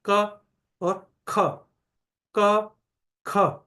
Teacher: जिसका उच्चारण करने में कम प्राण वायु कम वायु बाहर आ रही है तो वो अल्पप्राण हुआ क